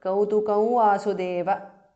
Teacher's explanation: Anuswara changes to the nasal of va